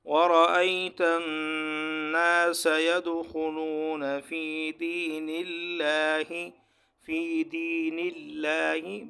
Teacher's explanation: یہاں لفظ اللہ سے پہلے جو نون ہے اس پر زیر ہے، اس لیے ہم یہاں اس کو پر نہیں پڑھیں گے، باریک پڑھیں گے